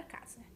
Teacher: na palavra casa, a letra S assume som de Z. E por isso nós escrevemos, nós representamos que foneticamente a letra S tem esse som, essa representatividade entre 2 barras da letra Z. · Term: fonema Z